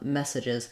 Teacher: In the second and third syllables, these vowels are going to be reduced vowels. So our clear vowel is in the word mess.